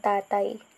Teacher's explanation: Ang patinig na A ay sinusundan ng malapatinig na Y. Ito ay matatawag nating diptongo kung ang patinig ay sinusundan ng malapatinig na Y o W.